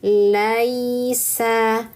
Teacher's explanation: Sempurnakan harakat fathahnya dulu. La. Lalu naikkan tengah lidah untuk yanya. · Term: harfun lin